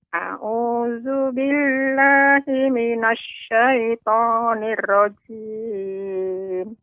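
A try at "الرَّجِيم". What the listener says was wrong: Ya, ra-nya lebih ditebalkan, Nek. Kembali ra-nya. A'udzu billahi minasyaitonir rajim.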